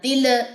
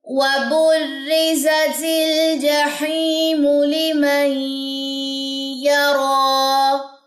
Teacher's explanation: لام کی جزم پہ آپ نے جھٹکا نہیں دینا، تل، یہ غلط ہو جائے گا، ٹھیک ہے۔